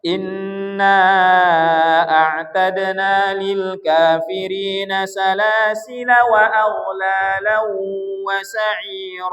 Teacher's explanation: Lafaz salasila kalau dibaca wasal alifnya tidak di baca. Kalau disambung ini kan alifnya tak boleh dibaca panjang.